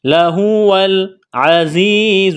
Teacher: وَإِنَّ اللَّهَ لَهُوَ، واو کو لام کے ساتھ ملانا ہے، لَهُوَ الْعَزِيزُ، زا میں سیٹی کی آواز پیدا کریں گے · یا ساکن سے پہلے زیر ہے، حروف مدہ یا ہے، ایک الف کے برابر کھینچنا ہے